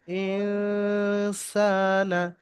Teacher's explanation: ইন গুন্না হবে, সা এক আলিফ টান হবে